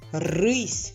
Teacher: в кінці слова Ми вимовляємо М'який приголосний сь літерам ь жодного звука не дає вона пом'якшує попередній приголосний пропоную